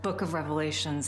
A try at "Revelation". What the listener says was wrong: Revelation. There's no S, it's singular.